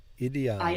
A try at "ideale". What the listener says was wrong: The I, we don't pronounce it like I, like in ideal, do we? How do we pronounce it in Italian? You have a lot of vowels to think about here. English fuses them together. In Italian, you will take the time to pronounce each vowel, and then we will stick another E on the end of.